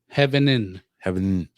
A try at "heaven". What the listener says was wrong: Heaven. Heaven. Not heaven in. Heaven. No, they would pronounce it heaven. Heaven. It's just it's not heaven. Heaven.